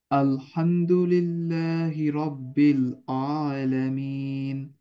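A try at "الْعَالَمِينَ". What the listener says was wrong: আইনটা আইনটা একটু প্রবলেম আছে।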